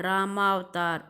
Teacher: राम जमा अवतार रामावतार, और यहाँ आ की ध्वनि आ गई। राम का पीछे वाला अ, अवतार का पहले वाला अ, और दोनों को मिलाकर बन गया आ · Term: दीर्घ संधि